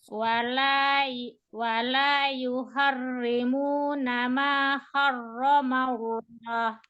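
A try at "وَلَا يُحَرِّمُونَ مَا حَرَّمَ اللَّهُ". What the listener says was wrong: Hari itu tipisnya kurang, masih ada tebalnya. Yuharri, diapain kalau dia mau tipis? Tarik, betul. Yuharri. Wala yuharri. Harramallah.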